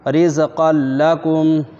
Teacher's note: قاف کے تنوین کو لام سے ادغام کر دیں گے بلا غنہ کے. را سے رز، قاف لام 2 زبر قل، رزقل، لام زبر لا، رزقل، کاف میم پیش کم، رزقا لکم، یہاں ادغام تام ہو رہا ہے.